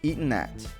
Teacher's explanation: So the word eaten gets linked to the word at, resulting in eaten at.